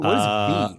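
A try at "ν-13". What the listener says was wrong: V is, it's not pronounced as V, I believe. So that is pronounced as new, actually new. Yeah, new 13.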